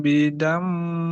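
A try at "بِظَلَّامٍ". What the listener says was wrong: Oke, sekali lagi, kasih celah, bukan rabbuhum bidam, bidam, tapi biza, za. Kasih celah.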